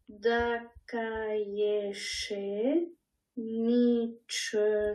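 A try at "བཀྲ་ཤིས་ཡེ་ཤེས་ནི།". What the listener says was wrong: Ah, pas Nietzsche. Daka Yesheni.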